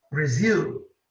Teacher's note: A força está no zil.